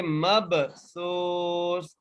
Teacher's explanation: اچھا میم کو با سے کیوں ملا رہے ہیں؟ کیونکہ با کے اوپر جزم ہے اور با پر ہم قلقلہ کر کے پڑھیں گے